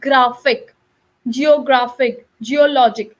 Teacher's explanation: we are not stressing on the first neither on the last we are actually stressing in the middle